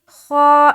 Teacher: خا موٹے حروف میں سے ہے، یعنی کہ اسے پر کر کے پڑھیں گے